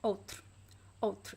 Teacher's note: You see that I don't even pronounce the U at the end. I just pronounce the consonants.